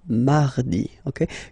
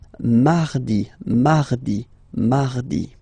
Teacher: So you can hear that you don't pronounce it that strongly, this R.